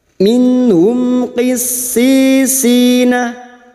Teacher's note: Mim sukun bertemu qaf idhar safawi. Mim sukun dibaca jelas tanpa mendengung.